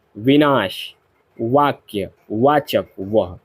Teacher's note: व जो शब्द है वर्ण है सॉरी व जो वर्ण है एक दंतोष्ठ वर्ण है।